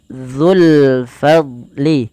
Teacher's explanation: fa alirkan nafas, dad tidak boleh mantul, tidak boleh fadlil. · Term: huruf dad